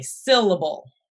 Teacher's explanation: You hear how the accent is on syll, not able.